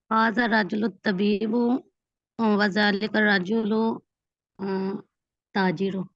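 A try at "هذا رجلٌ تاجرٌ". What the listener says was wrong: नहीं, ये देखे ना, आपने ये ठीक बोला जुमला, लेकिन आपने जबर जेर पेश लगाते हुए ख्याल नहीं रखा। तो आप कैसे हाजर रजुलु ताजिरू, नहीं ताजिरुन, हाजर रजुलु ताजिरुन। लफ्ज पर अलिफ लाम नहीं आती उस पर हमेशा क्या आती है, तनवीन, यानी कि दो जबर दो जेर दो पेश आती है। और दूसरा ये कि क्योंकि खबर है, खबर पर हमेशा क्या होते है, पेश आती है।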